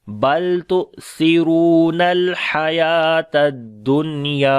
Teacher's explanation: यानी नून की आवाज़ को ज़ाहिर करके पढ़ेंगे , बल तु'सिरूनल हयातद दुनिया, और या को लंबा करेंगे,